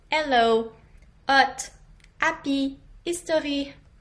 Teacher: the H sound alone is silent in French so we often just drop it in English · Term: dropped H